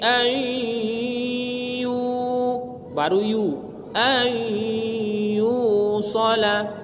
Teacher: Berarti dimasukkan bunyi nunnya ke ya, sehingga bunyi nunnya tidak ada lagi. Ma'al gunnah, disertai dengan dengung. Berapa lama dengungnya? 1 alif. Ini dikarenakan ya. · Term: idgham ma'al gunnah